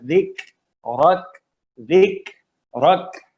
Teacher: اور جب وقف کریں گے آخر میں تو کاف پہ سکون آ جائے گا وقف کی وجہ سے. ذکرک، دو کاف ہیں، دونوں پہ ہمس ہے